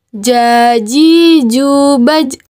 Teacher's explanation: huruf ini dilafalkan dengan menyentuhkan Tengah lidah ke daerah langit-langit